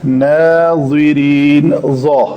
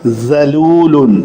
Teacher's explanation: ظا کو پر پڑھیں گے اور ذال کو پتلا پڑھیں گے